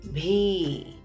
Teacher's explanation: Notice it is not B, it is bhi. Ha sound is coming with B.